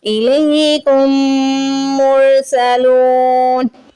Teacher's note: لام کے آگے واو مدہ آ رہی ہے، لام کو کھینچ کے ادا کریں گے. نون پہ زبر آ رہا ہے کیونکہ ہمیں یہاں پہ سٹاپ کرنا ہے سرکل کی وجہ سے، تو ہم کیا کریں گے، زبر کو ہٹا کے یہاں پہ ساکن لگا دیتے ہیں.